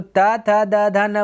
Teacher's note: दंत का मतलब त था दा जब बोलिएगा ना आपका जीभ जो है वो दंत में सटेगा